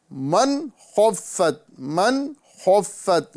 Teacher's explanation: ساتھ ہی ساتھ نون ساکن کا اظہار کرنا ہے، ٹھیک ہے۔ من خفت، من خفت یعنی نون ساکن کو گننا کر کے نہیں پڑھیں گے۔